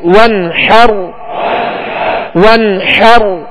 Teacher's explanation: حا کو وسط حلق سے ادا کریں گے